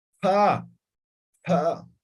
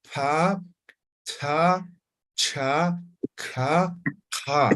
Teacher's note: se pronuncia de forma aspirada, como soplando